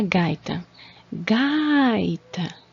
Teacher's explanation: a sílaba tônica é o Gai então ela vai ser é a penúltima ela vai ser paroxítona